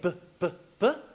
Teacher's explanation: B is a bilabial stop sound. So I say b, b, b, or I have a what?